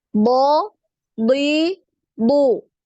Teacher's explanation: untuk huruf bod ini kan dia termasuk punya sifat yang isti'alah ya, yang tebal ya.